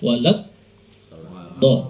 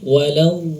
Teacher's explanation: Kalau istitolah tidak sempurna, walad dha, salah ya, karena tidak ada aliran suara. Harusnya huruf dha diucapkan dengan mengalirkan suara.